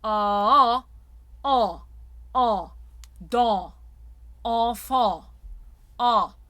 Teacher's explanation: So the dark A nasal has the base sound of the ah, from the aha, ah. Then if you think of the sound not being nasal but thrown up against the palate, so it is palatalized.